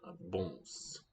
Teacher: So the trick to getting these nasal vowels like that one, bons, is we go in the direction of an N where the tongue tip comes forward.